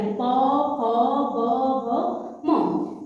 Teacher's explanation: प का उच्चारण करेंगे तो हमारे जो ओंठ होंगे वो क्या है एक दूसरे से टकराएंगे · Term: ओष्ठ